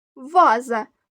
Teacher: до слова ваза два склади наголос падає на перший склад